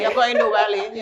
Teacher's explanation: Apparently back in the day they would turn their V's to W's.